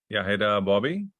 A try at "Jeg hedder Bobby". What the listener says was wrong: You also have a certain tendency to say Heather. It's more like Hilda.